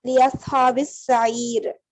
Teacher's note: حرف شمسی میں ہم لام اور الف دونوں کو ہی نہیں پڑھتے